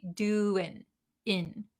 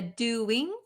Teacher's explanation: when we're talking very quickly, we skip the nasal sound and we just say doing, in.